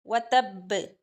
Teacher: कलकला अकबर, वतब, बा पे शद है, ये था वतब्बा, वक्फ की सूरत में इसको वतब, वतब इस तरह से पढ़ा जाएगा, थोड़ा जमाव के साथ, शिद्दत के साथ